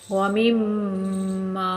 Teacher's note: میم مشدد ہوتی ہے تو 1 الف کے برابر رک کر غنہ کرتے ہیں